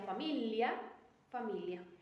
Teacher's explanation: la G en combinación con la L y la i en este fonema se omite la g y se pronuncia Li sin embargo con las demás es igual como sería en español